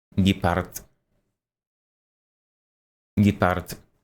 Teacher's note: It's kind of like half voiced, like a half voiced consonant.